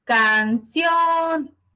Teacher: Es una palabra aguda porque su sílaba tónica es la última.